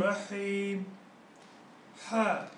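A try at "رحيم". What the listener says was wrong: Actually, now this is your problem. I know your weakness. You're saying ha, yeah?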